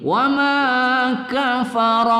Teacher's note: kita baca ro berbaris fathah kita baca baris di atas kita baca tebal kita baca tafkhim